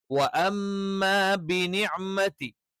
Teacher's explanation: വ ചുണ്ട് വൃത്താകൃതിയിൽ വെച്ചുകൊണ്ട്, മ 2 ചുണ്ടുകൾ മൃദുവായി അടച്ചു വെച്ചുകൊണ്ട്